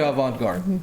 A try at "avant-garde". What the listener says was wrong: You don't pronounce the T, baby. It's avant.